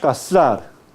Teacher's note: su pronunciación es fricativa interdental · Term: la z castellana